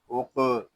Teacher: یہاں قاف ساکن ہے اس میں کلکلا خوب ظاہر کریں گے